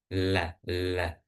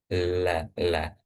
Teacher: huruf lam itu diucapkannya dengan menempelkan lidah dengan langit-langit yang agak ke depan